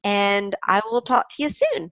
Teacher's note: you reduces to yah when it's unstressed